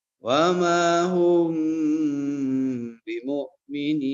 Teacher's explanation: Ikhfa syafawi. Ya, jadi mimnya dibaca samar dan juga mimnya berdengung